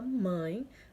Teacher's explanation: que não é acento ele é um sinal que dica que o som da vogal a ou ó é nasal ou seja será emitido parte pelo nariz parte pela boca